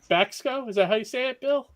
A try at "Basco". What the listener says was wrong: The C is silent. You can just say Basco.